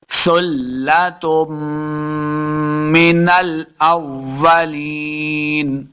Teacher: سا کو پڑھتے ہوئے سیٹی کی آواز نہیں آنی چاہیے جیسے سین پہ آتی ہے، تو سا کو نرمی کے ساتھ پڑھیں گے اور لام کے ساتھ ملانا ہے، لام مشدد ہے۔